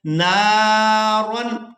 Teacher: और अलिफ मद्दा का कायदा ये था कि अलिफ खाली हो और उससे पहले वाले हरफ के ऊपर अगर हरकत ज़बर है तो वो अलिफ मद्दा होगा। तो यहाँ हमने नून को अलिफ मद्दा की वजह से खींच कर अदा करना है